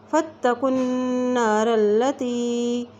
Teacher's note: اور نون کے اوپر جب شد آ جاتی ہے تو وہاں پہ غنہ کر کے پڑھیں گے